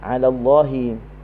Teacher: kalimah Allah apabila sebelumnya bagi atas maka dibaca dengan tebal. 'Ala Allah, lam tu dibaca dengan tebal.